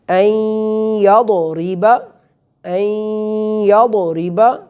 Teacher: یہاں را پر زیر ہے تو یہاں را جو ہے یہ پر نہیں پڑھا جائے گا، را کو ہم باریک پڑھیں گے